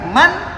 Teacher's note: Dinamakan idhar karena jelasnya bunyi nun ketika kita baca, atau jelasnya bunyi tanwin ketika dibaca.